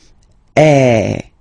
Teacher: So it's really open. I mean, the sound is really open, and normally your mouth should be opened a little bit more than with the accent aigu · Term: accent grave